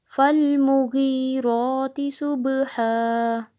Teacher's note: یہاں صوت کو موٹا، با پہ قلقلہ، ہا حلق سے